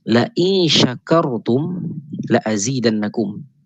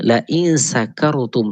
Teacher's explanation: terubah shin kepada sin